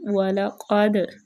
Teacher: وَلَقَدْ عَلِمُوا لَمَنِ اشْتَرَى، لام کو باریک، قاف موٹا اور دال پہ کلکلہ کرے گی